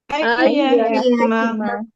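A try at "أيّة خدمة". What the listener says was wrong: Iya, itu agak naik ya nadanya.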